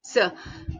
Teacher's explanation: tak bersuara, voiceless. Okay, seh. Dan nama dia konsonan fricative